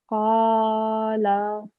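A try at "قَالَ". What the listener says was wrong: Just the lam, make it a bit shorter, 1 second long.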